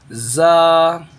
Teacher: सिर्फ अपने ऊपर नीचे के दांतों को मिलाए, सख्ती से मिलाए तो निकलता है जा